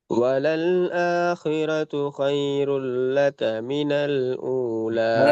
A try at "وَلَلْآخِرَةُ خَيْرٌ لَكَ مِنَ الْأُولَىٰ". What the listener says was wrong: தான் வருது ஹா வருது இல்ல. வலல் ஆஹிரத்து ஹைருல் லக. ரெண்டு ஹாவை மாத்தணும்.